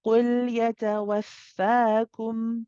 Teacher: The makhraj, or the articulation point of this kaf, is a bit more forward or in front of the qaf.